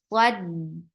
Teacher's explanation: It has Safir. The sound should not stop until the next letter will come. Yes. This is the sound you will create for Sad.